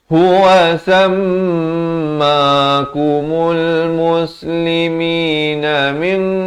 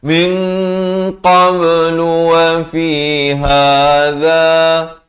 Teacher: ikhfa di sini dengan tebal dua harakat